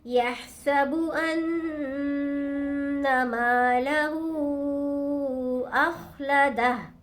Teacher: یحسب ان مالہ، میم کو کھینچیں گے، ایک الف کی مقدار الف مدہ ہے، ہا کے اوپر الٹا پیش بھی ہے اور مد بھی ہے تو اس کو لمبا کھینچیں گے، تین الف کی مقدار